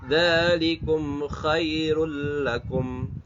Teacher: Harusnya kalau secara rumus mushaf Madinah dibaca dengung. Tapi karena bertemu dengan lam maka tidak dibaca dengung. Namanya melebur tanpa dengung. Istilah Arabnya, istilah tajwid adalah idgham bila gunna.